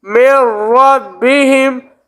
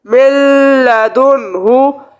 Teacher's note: یہ دیکھیں یہاں پہ جو ہے نا یہ ادغام بلا غنہ ہو رہا ہے، یعنی بغیر غنہ، کیونکہ ہم نے پڑھا تھا نون ساکن یا تنوین کے بعد حروف یرملون میں سے کوئی حرف آ جائے تو ادغام ہوگا را اور لام میں بغیر غنہ کے